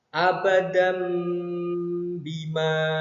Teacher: tanwinnya berubah menjadi suara mim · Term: iqlab